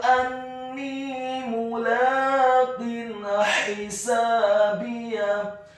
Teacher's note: Kata anni mulaqin hisabiyah, huruf alifnya dibaca tipis fathah 1 harokat, huruf nunnya ditasydidkan kasroh 2 harokat karena setelahnya ada huruf ya sukun. Kemudian kata mulaqin hisabiyah, huruf mimnya dibaca dhammah 1 harokat.